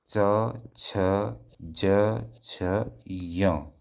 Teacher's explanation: च कहां जा रहा है जीभ आपकी? तालु पर जा रही है। छ ज छ य तो तालु पर जा रही है।